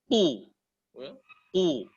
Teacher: ketika dia dhammah, dia ketebalannya akan lebih tebal dengan memonyongkan sedikit mulut kita